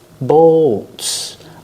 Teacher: Use the long O plus the dark L. Bolts. Like cold.